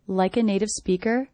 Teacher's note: I notice my voice goes up at the end here. Speaker. That's because the sentence isn't over.